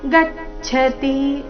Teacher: ಗಚ್ಚತಿ ಗ ಮೇಲೆ ಆಘಾತ